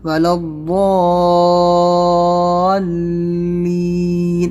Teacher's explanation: آواز بہت نیچے لے جانا ہے لین کی، کیونکہ یہاں پر زیر ہے، اس کو لین بالکل نہیں کرنا ہے، لین بہت نیچے آواز لے جانا ہے اس کو، اور دھیرے دھیرے لے جانا ہے. · مد جب وہاں سے ختم کریں گے تو دھیرے دھیرے نیچے آواز آنا چاہیے، ایک دم سے لین نہیں کر دینا ہے